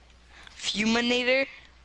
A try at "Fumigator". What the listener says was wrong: You know how you're saying with an N? Fumigator. Like an alligator.